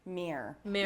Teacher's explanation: a lot of Americans would pronounce it almost in one syllable